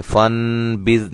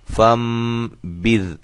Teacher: اس نون کو ہم میم سے بدل کر پڑھیں گے